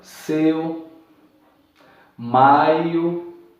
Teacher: a sílaba é formada por uma vogal e depois por uma semivogal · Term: ditongo decrescente